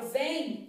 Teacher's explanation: Então, na palavra vem, eu tenho 3 letras e 3 fonemas. Sendo que o M tem som de I. Ou seja, esse M tem um som de semivogal